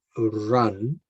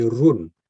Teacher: the pronunciation of his U is more an ah. So instead of saying run, he would say run.